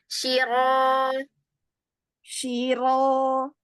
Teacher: rnya ditebalkan ya lagi angkat lagi pangkal lidahnya lepas Sir yuk lagi sir sir bagian pangkal lidah kurang naik